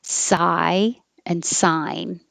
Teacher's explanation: you start very open i and then your jaw rises and your tongue rises